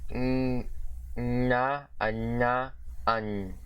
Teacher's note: the voiced alveolo-palatal nasal consonant, or N with a curl